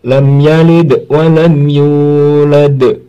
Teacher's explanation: kalau di akhir kalimat, maksudnya dalam posisi wakof, dia menjadi kubro qalqalahnya atau besar, pantulannya kuat. Kalau tidak posisi wakof, pantulannya ringan tapi tetap memantul, wajib memantul. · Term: qalqalah kubro